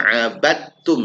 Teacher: seakan-akan dalnya mati ya seakan-akan dalnya hilang abadtum enggak ada dalnya · Kemudian ini juga idgham ya, masuk. Abadtum dibaca abadtum, seakan-akan dalnya mati ya. Seakan-akan dalnya hilang.